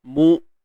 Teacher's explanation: Hamzah syiddah. Okey, tahan suara. Suara tertahan.